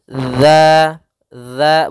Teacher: yaitu sifat idlak yang memang mudah dalam pelafalannya yang mana makhrajnya makhraj huruf dalal yaitu ujung lidah menempel dengan gigi seri atas gigi seri atas sehingga pelafalannya dia dza dza bukan Za ya